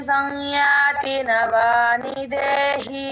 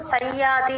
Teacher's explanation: ముక్కుతో వచ్చినప్పుడే సంతి అనాలి సం అన్నట్లుగా పలకాలి